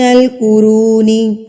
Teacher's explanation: رو کو میں کھینچ کے پڑھوں گی کیونکہ یہ حروف مدہ واو ہے